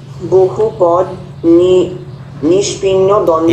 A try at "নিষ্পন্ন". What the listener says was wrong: এরে নিষ্পন্নকে নিষ্পিন্ন, পিন্ন পড়ে যাচ্ছে বহুক্ষণ থেকে।